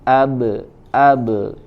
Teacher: Misalkan ba, berarti dia menjauhkan atau memantulkan dua unsur makhraj, yaitu bibir dengan bibir. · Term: qalqalah